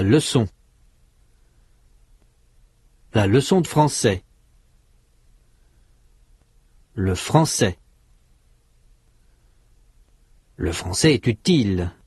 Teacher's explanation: there is a tonic stress on the last syllable of each rhythmic group on and on but within a single rhythmic group all syllables have the same intensity there is no stress and the rhythm is extremely uniform.